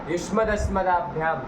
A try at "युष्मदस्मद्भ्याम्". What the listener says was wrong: क्या क्या शब्द का युष्मदस्मदाभ्याम, ये कैसे बनेगा? ये आ कहाँ से ले आए तुम? युष्मद अस्मद हलंत शब्द है ना? अरे युष्मद अस्मद को द्वंद्व कर दिए, युष्मद अस्मद शब्द बन गया। आगे भ्याम लाए, युष्मद अस्मद भ्याम,